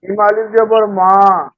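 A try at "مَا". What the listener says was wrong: এটা কিন্তু আলিফ পড়া যাবে না। কি করতে হবে? আলিফ থাকে খালি, খালি না হলে এটা কি হয়ে যায়? হামজা হয়ে যায় না? হ্যাঁ, তাহলে মা ধাক্কা হবে।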